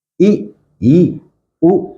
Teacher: उच्चारण भी करके बताऊंगा, ई, ए, मुंह खुला आपका थोड़ा सा, ई, उ, बिल्कुल थोड़ा सा मुंह खुलेगा आपका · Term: संवृत